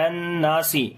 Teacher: اذا اکتالوا علی الناس، عین کو گلے کے درمیان والے حصے سے پڑھیں گے، لام کو ڈائریکٹ نون کے ساتھ ملائیں گے، یا یہاں پر سائلنٹ ہے یا نہیں پڑھیں گے، نون کے اوپر شاد ہے غنہ کریں گے، الف مدہ ہے لمبا بھی کریں گے۔